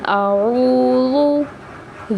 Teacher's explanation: اس میں واؤ مدہ کا قاعدہ ہے، یعنی واؤ مدہ کو ایک الف یعنی 2 حرکات کے برابر کھینچ کے پڑھنا ہے۔ اعوذ، زال کو نرمی کے ساتھ ادا کرنا ہے، زا نہیں پڑھنا۔